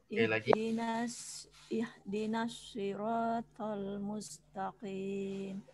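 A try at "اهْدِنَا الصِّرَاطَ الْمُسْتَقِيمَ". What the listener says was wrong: Musta. Tanya juga tipis. Mustaqim. Itu tebal, bukan musta, tapi musta. Ah, tipis huruf ta. Nanti tadi itu ya, huruf ta-nya jangan menebal.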